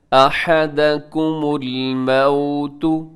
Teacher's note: یہ جو واو ہے الموتو میں یہ واو لین ہے، جب واو ساکن سے پہلے زبر ہو تو واو لین ہوتی ہے، اگر واو ساکن سے پہلے پیش ہوتی تو واو مدہ ہوتی۔